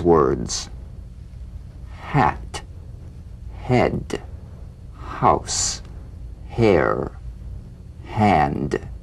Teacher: play the H gently without excess breath feel nothing more than a slight hesitation before the vowel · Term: gentle H